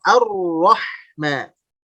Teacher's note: Kurang lebih 2 atau 3 kali getaran ya. Nah, selebihnya itu akan tertahan suaranya. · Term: takrir